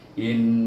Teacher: baca dengan wajibul gunnah, dengan gunnah, iaitu in, dua harakah lamanya. Tapi kita baru belajar panjang sikit, tak apa, asalkan dengar bunyi gunnah ni.